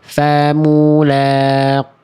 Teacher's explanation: Ingat ini qafnya qaf kasroh. Kalau qaf kasroh dia nisbi. Dia kadar ketebalannya berkurang. Lalu dia nggak perlu pakai monyong-monyong.